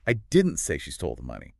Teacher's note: And this one implies she definitely stole something, just not the money. The stress on money creates a contrast with another object. Maybe you said she stole the jewelry, or the car, or the confidential files.